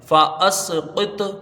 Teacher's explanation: اس کو دیکھیں، فا زبر فا، حمزہ سین زبر اس، فا اس، قاف توازر قط، فا اس قط، فا کو جلدی پڑھا جائے گا، حمزہ کو سین سے ملائیں گے، قاف کو تو سے ملائیں گے، فا اس قط، یہاں بھی قوی درجے کا قلقلہ ہوگا، ایک لوٹتی ہی آواز آئے گی